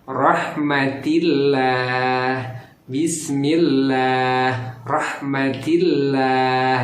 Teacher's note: Karena sebelum lafaz Allahnya ada baris kasroh, dibacanya tarkik atau tipis.